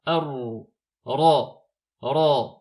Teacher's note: on roule le ra une fois quand il est maftouh, madmoum ou maksour. En revanche, lorsqu'il est sakin, c'est arru.